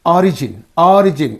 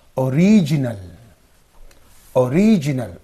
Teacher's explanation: when it is a noun it is receiving on the first syllable when it is an adjective it is receiving on the second syllable